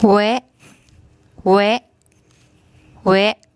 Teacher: the Sara air and the Sara a actually make a vowel combination. They make a very short a sound, and this is the Warwan W initial consonant.